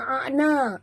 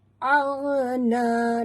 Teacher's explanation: huruf ghain ya sahabat, bukan ain, jangan baca a'na, bunyi dia aghna, na mat tabi'i 2 harakat.